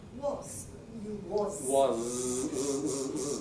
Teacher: Was. That's a z as well. These are voiced, not unvoiced.